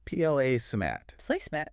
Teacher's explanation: And the stress there is on the first part.